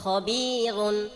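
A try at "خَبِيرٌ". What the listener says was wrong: র মোটা হবে রু রুন খবিরুন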